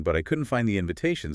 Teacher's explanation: couldn't find just runs together